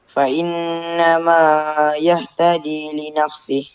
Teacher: Tapi baca fainnamayah sepatutnya ma ada dua harakat